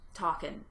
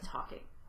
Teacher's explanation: Think about how when you are talking, you might just leave off, for instance, the final G of a word that ends in ing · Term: elision